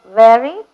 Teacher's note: when you pronounce a V word, bite your lower lip with your upper teeth. Labiodental we call it.